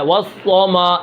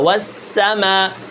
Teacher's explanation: استفال انفتاح، یعنی سین باریک ہوتا ہے